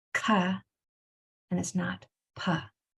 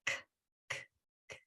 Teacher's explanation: when you're sounding out words with a hard C and a P, there can be no voice, only air that comes out. So it's not ka and it's not pa. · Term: voiceless sounds